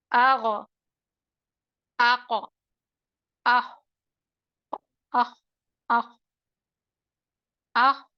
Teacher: بتلانے کا مقصد یہی ہے کہ بیک سائڈ آف دی ٹنگ کا استعمال کرے، مڈل آف دی ٹنگ کا نہیں کرے، قاف خا اور غین کا، کیونکہ یہ مستعلیہ حرف ہیں. · مستعلیہ حرفوں میں زبان کا پشت حصہ اوپر کی طرف مائل کر کر پڑھا جاتا ہے، آواز سخت سی ہو جاتی ہے. آغ آق آخ آخ آخ آخ، کیونکہ خا حمس والا حرف ہے اور ادنا الحلق کا حرف خا ہے، اقصا اللسان کا حرف قاف ہے، ادنا الحلق کا حرف غین ہے.